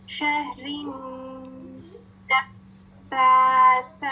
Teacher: जब हम नून मुशद्दद की लाजमी क्वालिटी क्या है कि उसमें गुन्ना की क्वालिटी है, नून मुशद्दद गुन्ना के साथ अदा किया जाएगा, गुन्ना क्या है, नाक से आवाज निकलेगी